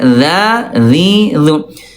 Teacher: Huruf dza dia istifal turun pangkal lidahnya tipis.